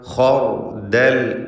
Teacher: ഖർദൽ ഖാ തഫ്ഖീം ചെയ്യേണ്ട ഇസ്തിഅലാൻ്റെ അക്ഷരമാണ്. ശേഷം റാ, അതിനും തഫ്ഖീമാണ്.